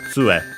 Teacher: Okay, actually, tsue. So, accented on the tsu, the first syllable